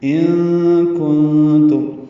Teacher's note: نون ساکن کے بعد کاف اور تا آنے کی وجہ سے دونوں جگہ اخفا ہے